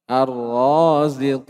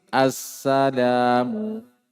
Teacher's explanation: Semuanya idgham, lamnya tidak terbaca, langsung masuk ke huruf-huruf setelahnya